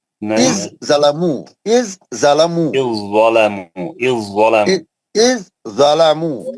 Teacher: हुर्फ ज़ा साकिन का हुर्फ दाद मुशद्दद में इदगाम मुतजानिसीन हो गया।